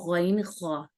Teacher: गैन ख्वा ऊपर अदना हलक से अदा होता है, यानी ऊपर हलक का ऊपर का हिस्सा।